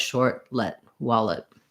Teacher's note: what you want is just to be very short and reduced on that second syllable so long wall and then light short let wallet um great